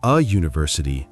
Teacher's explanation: [music] Now university starts with u which is a vowel letter but the sound at the beginning is like u like a y sound. So we actually say a [music] university not an university.